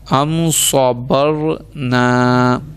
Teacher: دیکھیں را ساکن اس سے پہلے زبر ہم نے پڑھا. را ساکن سے پہلے زبر ہے تو اس کو موٹا